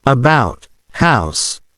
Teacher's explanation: The OU is pronounced like oo, making about sound like a boot. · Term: The OU sound